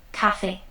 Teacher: means that you use both the lips only no teeth and it's a slender F which means that the lips are pulled back if it were a broad F the lips would be pushed